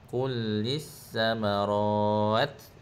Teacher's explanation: samarat ra tu tebal berakhir dengan ta yang ada angin sedikit.